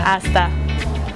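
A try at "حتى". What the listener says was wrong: You just have an S in there. Hatta.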